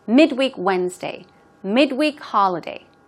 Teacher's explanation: even when it's used as an adjective the stress usually goes on the first syllable